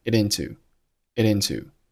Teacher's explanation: 此时▁it▁结尾的▁t▁在前后两个元音之间可以做一个▁flap▁t，▁也就是弹舌音处理，听起来是一个很轻很弱的▁d▁的音 · it▁和▁into▁同样辅元连读